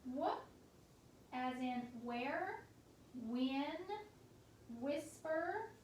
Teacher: It has that w, that breathy w sound.